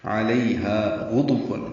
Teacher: غین پر ہے موٹا کریں گے اور یہ ادنی حلق سے ادا ہوتا ہے. دال کو واو سے ملائیں گے، واو ہونٹوں کی نہ تمام گلائی سے ادا ہوتی ہے.